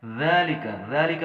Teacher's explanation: ذال نرمی والے حروف میں سے ہے، لہٰذا ہم نے اسے بالکل سوفٹ یعنی نرمی سے ادا کرنا ہے